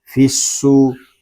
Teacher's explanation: فا کو صاد کے ساتھ ملا کر پڑھیں گے کیونکہ صاد مشدد ہے، اس کو پر بھی پڑھیں گے کیونکہ یہ حروف مستعلیہ میں سے بھی ہے۔